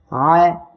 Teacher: আইন অক্ষরটা উচ্চারণের সময় গলাটা চেপে বাতাস বন্ধ করে আপনারা উচ্চারণ করবেন